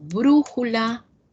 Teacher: esta fuerza de voz se ubique en la antepenúltima sílaba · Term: esdrújulas